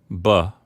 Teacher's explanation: when you say B however your vocal cords do vibrate buh that's the only difference between a P and a B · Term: voiced